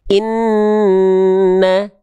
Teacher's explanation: Nun tahan ketika bertasydid. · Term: gunah